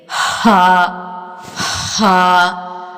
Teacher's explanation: इसकी आवाज़ जब निकलती है तो आवाज़ निकलने के साथ साथ जो सांस है उसके साथ जारी रहती है, रगड़ते हुए। आवाज़ जो है मुंह के अंदर रगड़ते हुए निकलती है। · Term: बारीक हर्फ